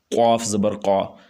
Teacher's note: یہ قاف گلے سے ادا ہوگی